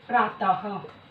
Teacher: विसर्ग का उच्चारण हा के रूप में किया जाता है।